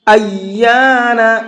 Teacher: یا کو کھینچ کر کے بھی پڑھیں گے اور ساتھ ساتھ یا کو ڈبل پڑھنا ہے، ایانا نہیں پڑھنا۔